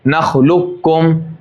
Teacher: قوف کی صفت باقی نہیں رہے گی. سیدھا چھوٹا کاف پڑھیں گے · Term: ادغام تام